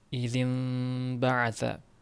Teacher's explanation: Nun o'rniga mim bilan ixvo qilinib, ikki harakat g'unna bilan o'qilinadi. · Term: inqilob qoidasi